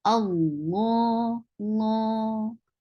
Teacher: Hamza is very strong letter, and now you are joining it with Allah subhanahu wa ta'ala's name. So this lam will be heavy.